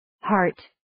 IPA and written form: hɑːrt (Heart)